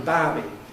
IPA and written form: ˈbaːbi (barbie)